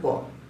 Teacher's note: কিন্তু যদি আমরা প বলি, দেখো তাহলে প বলার শুরুতেই কিন্তু আমাদের দুই ঠোঁটকে আটকে দিতে হচ্ছে, দুই ঠোঁটকে আটকে দিতে হচ্ছে প। আগে দুই ঠোঁট আটকে তারপরে উচ্চারণ করতে হচ্ছে প